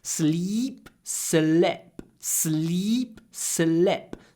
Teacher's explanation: you need to do a very short I in slipping